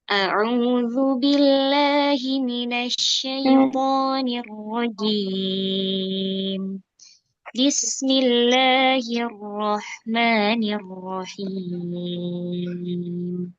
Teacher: Taawud dan basmalah naik langsung ke turun.